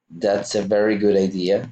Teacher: So you join both sounds, good at the end and idea at the beginning.